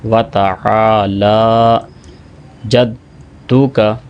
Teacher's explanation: واؤ کو الگ پڑھیں گے، تا کو الگ پڑھیں گے، اور پھر لام کو بھی 2 سیکنڈ لمبا کریں گے۔ اگر یہاں پہ لمبا نہیں کریں گے تو یہ بھی بڑی اور حرام غلطی ہے، کیونکہ ہم حرف کو گھٹا رہے ہیں۔